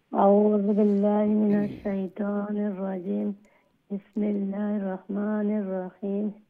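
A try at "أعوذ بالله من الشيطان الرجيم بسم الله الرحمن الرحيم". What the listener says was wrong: রাজিম আর রাহিম আরো একটু লং করলে আরো সুন্দর হইব।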